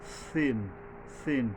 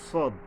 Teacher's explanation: সিনকে আমরা পাতলা ভাবে বলব সিন সিন আর সদ হলো মোটাভাবে সদ ফাং স মানে কিছুটা বাতাস বের হয়ে যাচ্ছে।